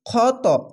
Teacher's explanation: খ মোটা অক্ষর তার জন্য এখানে আকার উচ্চারণ হবে না